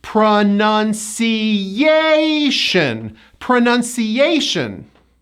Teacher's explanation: There are 5 syllables, and the 4th syllable is stressed.